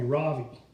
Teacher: In America, people call me Ravi, with the stress on the first syllable.